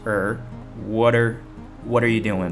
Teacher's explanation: R 在日常口语里经常会缩短成弱化的发音